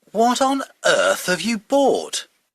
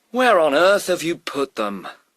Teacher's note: as you can notice the intonation is like disbelief, like kind of boring or surprised what the other person has done.